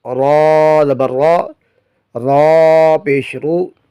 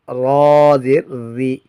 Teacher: را پر جب زبر آئے یا پیش آئے تو را کو پر پڑھیں گے، را زبر را، را پیش رو، اور جب اس پر زیر آئے اس کے نیچے تو اس کو باریک پڑھیں گے، را زیر ری۔